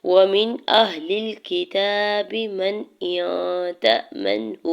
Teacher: واو کے زبر کو جلدی سے ادا کرنا ہے. میم کے زیر کو نون ساکن کے ساتھ ملاتے ہوئے اظہار حلقی کریں گے، یعنی غنہ یا اخفا نون ساکن پہ نہیں ہوگا، اظہار کریں گے · کاف کے زیر کو بغیر کھینچی ہوئے ادا کرنا ہے. تا کے اوپر کھڑی زبر دو حرکت کھینچ کے ادا کریں گے